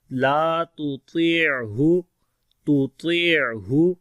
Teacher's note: لا تطیعہ، لا کو لمبا کریں گے، الف مدہ ہے، تا کو باریک پڑھیں گے، طا کو موٹا پڑھیں گے، حروف استعلا ہونے کی وجہ سے عین کے اندر صفت توسط آتی ہے، تھوڑا نرم پڑھیں گے.